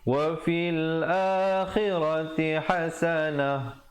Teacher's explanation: Wa fil akhirati hasanah. Jadi berhenti dengan ta marbutah itu ditukarkan kepada ha